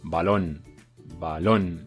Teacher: Otro ejemplo de palabra aguda, pues por ejemplo, balón, balón, on suena más, bueno, mejor dicho, lon suena más fuerte, lon es la sílaba tónica de balón, y como está en último lugar, es aguda.